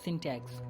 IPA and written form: ˈsɪntæks (Syntax)